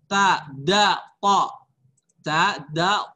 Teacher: Dia sama semua di pangkal seri atas. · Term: makhrajnya